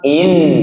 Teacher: Nun langit-langit, ujung lidah bertemu langit-langit. Maka diakhirkan dengan menempelkan ujung lidah dengan langit-langit. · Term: Huruf nun